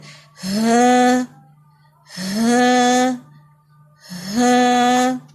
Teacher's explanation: گلے کا سب سے نچلا حصہ ہے وہاں سے ہاں ادا ہوگا, اور لائٹ یہ ایزی ساؤنڈ ہے.